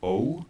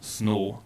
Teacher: in American English we have a diphthong, O, but in South Asian Englishes and in Sri Lanka in particular there's a tendency to use a long monophthong instead, snow. So we don't get snow, but we have snow, one long vowel.